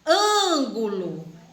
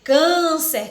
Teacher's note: na vogal A também recebe acento quando é um som nasal, meio que sai pelo nariz